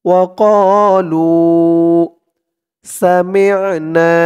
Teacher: এক আলিফ টান পেশের পরে ওয়াও সাকিন